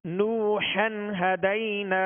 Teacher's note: اب نوحن، ہا کے اوپر 2 زبر کی تنوین ہے، اور اس کے بعد ہم دیکھیں گے کہ حروف حلقی میں سے ہا آ گیا، تو یہاں کون سا قاعدہ لگے گا؟ اظہار کا، غنہ نہیں کریں گے